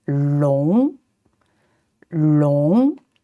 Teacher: also second tone going up